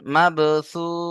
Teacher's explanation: এখানে দেখেন আয়াতের শেষে ও মাদ্দা রয়েছে, ও সাকিন ডান দিকে পেশ, এই যে ও মাদ্দা, আর ও মাদ্দার পরেই আমরা থামছি, তাই মাদ্দে আরিজ ওকফি হবে। মাদ্দে আরিজ ওকফিকে 3 থেকে 4 আলিফ টান দিতে হবে